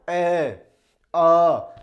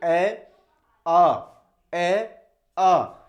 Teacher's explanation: कंठ से जो स्वर निकलते हैं आपके, वो होते हैं आपके ए और आ। देखिए, जब आप ए और आ का उच्चारण करते हो, ए आ, तो आपके इस कंठ से आवाज निकलती है।